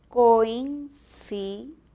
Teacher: las que más suenan son las vocales abiertas O y A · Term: diptongos